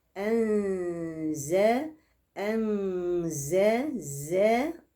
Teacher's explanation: المد المنفصل علامه المد عموما اللي هي جناح الطائر انزلناه عندي بين النون وحرف الزاي في حكم الاخفاء الحقيقي للنون · أطلع صفير الزاي اللي عامل زي زنة النحلة